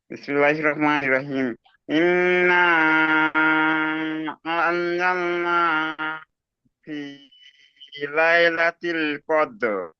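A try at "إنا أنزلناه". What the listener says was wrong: মাশাআল্লাহ, খুব সুন্দর বলেছেন, তবে হাটা পরিষ্কার উচ্চারণ হয়নি। আনজাল না হু, হা পরিষ্কার গম্ভীর আওয়াজে হু, বলেন।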